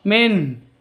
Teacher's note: nun mati bertemu dengan Ha jelas bacanya terang tidak boleh didengungkan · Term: izhar halqi